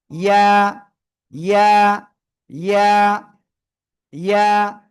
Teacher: জিহ্বার মাঝখান তার বরাবর উপরে তালুর সঙ্গে লাগিয়ে জাস্ট এক আলিফ টেনে উচ্চারণ করতে হবে। ইয়া ইয়া ইয়া ইয়া, ঠিক আছে, ওকে।